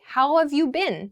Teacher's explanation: how have gets reduced to how of